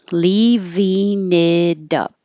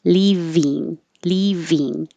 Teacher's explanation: if you want to connect it to a vowel that's after it, you can change it from ing to een.